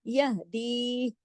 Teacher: ये या मद्दा है, 2 हरकत खींचेगा